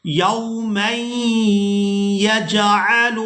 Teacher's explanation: یہاں میم کو یا مشدد کے ساتھ ملائیں گے تو آواز کو اس طرح سے ادا کریں گے، میم یا دو زبر میں، یومًا يَجْعَلُ الْوِلْدَانَ شِیبًا۔